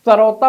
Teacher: जीभ को मोड़िए तो ये मूर्धन्य स है, और ये सीधा साधा दंतव्य स है। सड़क बोलेंगे आप, सरौता बोलेंगे, आपकी जीभ दांत को टच करेगी।